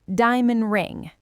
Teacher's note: That is a tough transition. So we delete the D.